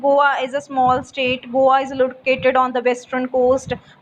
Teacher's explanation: whenever we are reading any simple statement, our voice is low, the pitch of the voice is low, or falling intonation you may say · So we read statements simply without giving any stress or without rising our voice.